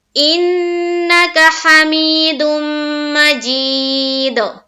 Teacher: جب ہم رکیں گے تو دال کے اوپر کیا کریں گے؟ قلقلہ